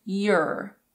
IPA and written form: jər (your)